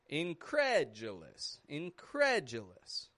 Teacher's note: And notice how the cre, incredulous, the cre is the part that's raising in the stress. And then it goes flat on the j. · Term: syllable stress